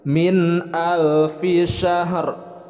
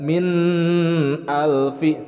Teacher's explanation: Nah, kalau min alfi nun sukun bertemu dengan alif, itu hukum bacanya izhar, dibacanya jelas.